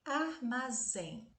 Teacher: Reparem que a última sílaba é a tônica e ela é terminada em EM. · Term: oxítona